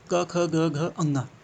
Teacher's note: कंठ, क ख ग घ अंगा, कंठ से निकल रहा है, गले से निकल रहा है सीधे